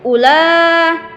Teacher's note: cara membaca u langsung ula, tidak dipanjangkan pada u